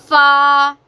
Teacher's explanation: ऊपर वाले दांतों का किनारा और निचले होंठों का तड़ हिस्से से अदा होते हैं